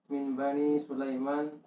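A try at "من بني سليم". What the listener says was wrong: Min Bani Sulaim. Bukan Sulaiman. Min Bani Sulaimin.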